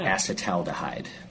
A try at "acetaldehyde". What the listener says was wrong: That sounds like acetaldehyde. Like acetaldehyde. There's an L in there.